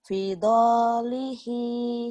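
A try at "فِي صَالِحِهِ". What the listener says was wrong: Bukan do, ini sod.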